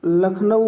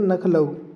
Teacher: ना और ला में वर्ण विपर्य हो जाता है।